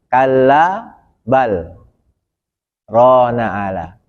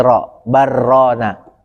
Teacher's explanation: Kalau dilanjut tanpa sakta, jadi idgham mutajanisain. Lam mati ketemu ro. Lamnya masuk ke ro.